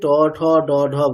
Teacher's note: আমাদের মূর্ধা হচ্ছে আমাদের ট বর্গ যেখান থেকে ট ঠ ড বলছি।